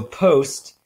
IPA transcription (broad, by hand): post